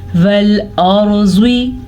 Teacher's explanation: را کو پر پڑھیں گے, را ساکن سے پیچھے والے حرف پہ زبر ہونے کی وجہ سے